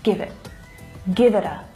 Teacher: it reduces down to the schwa sound give it and also that T is a stop T which means that I'm not fully pronouncing it I'm not letting the air go afterwards